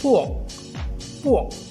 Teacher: Ya, dia bukannya pork. Dia tak ada bunyi KH, H tu tak ada ya. Cuma bunyi dia K sahaja. Okey, K sahaja.